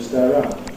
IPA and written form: ˈsteəˈraʊnd (stay around)